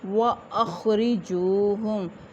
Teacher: خا حروف مستعلیہ میں سے ہے، اس کو پر ادا کیا جائے گا، را کو باریک کیونکہ اس کے نیچے زیر ہے، اور واو ساکن جیم کے اوپر پیش واو مدہ، اس کو ایک الف کے برابر لمبا کریں گے۔